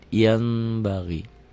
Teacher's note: Bunyi n-nya berubah menjadi m, ada bindeng sedikit. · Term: Iklab